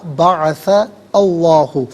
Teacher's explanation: بعث میں سا پر زبر ہے، اسے اس میں اللہ کی حرف لام کے ساتھ ملائیں گے، درمیان میں سے الف حمزہ کو حذف کریں گے